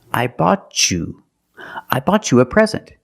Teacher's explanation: when I have T before the Y, I can make the chch sound.